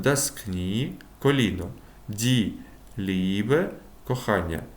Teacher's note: поєднання і та е найчастіше саме вимовляється як довге і